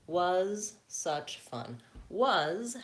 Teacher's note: was has the vowel schwa